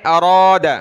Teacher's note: را کو موٹا کریں